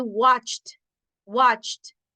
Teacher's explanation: Se escucha como una T. No se oye la E.